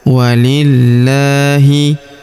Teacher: Pada huruf la kita tahan dan tekan ya di lafaz Allah ini karena terdapat tanda tasdid di atasnya.